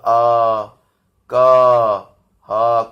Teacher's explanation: ये शब्द अ क ह कहां से बोले जा रहे हैं, ये कंठ से बोले जा रहे हैं।